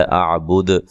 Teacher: وقف کی صورت میں دال پہ قلقلہ کرنا ہے خوب واضح طور پہ